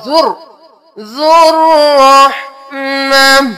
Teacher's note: जा को direct रॉ के साथ मिलाइए